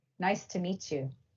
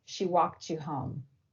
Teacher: a final T sound in a word and an initial Y sound in the following word fuse to make a CH sound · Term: coalescence